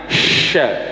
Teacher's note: Tapi posisi sya-nya itu di lidah, ya. Lidah tengah.